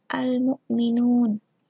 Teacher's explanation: alif lam qamariyah, alif lamnya nampak dibaca